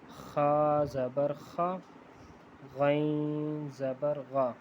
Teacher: زبان کے جو اندر جڑ والی سائڈ ہے وہاں سے یہ ادا ہوگا